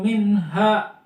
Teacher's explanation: itu jelas dibacanya idhar karena nun ketemu ha